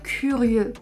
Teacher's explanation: Sometimes we also have the letters E and U which make / ø / much more closed